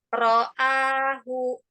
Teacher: Nah, ro'ahu tipis, bukan ro'ah.